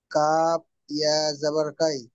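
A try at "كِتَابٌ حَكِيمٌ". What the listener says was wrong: কাফ ইয়াজের কি, জের আছে জবর না, কাফ ইয়াজের কি। হাকি, কিতাবুন হাকি। ম- মিম দু পেশ, মিম দু পেশ মুন। হাকিমুন। কাফের নিচে জের এসছে।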